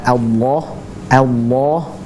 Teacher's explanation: cara membacanya adalah dengan mengangkat pangkal lidah atau lidah bagian belakang itu diangkat itulah yang membuat huruf tersebut tebal sekali lagi yang membuat tebal adalah dengan diangkatnya pangkal lidah atau